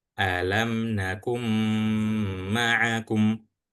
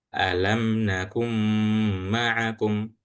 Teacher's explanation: setelah huruf kaf ini dibaca, itu langsung masuk ke huruf mim dan bacaannya harus gunnah atau dengung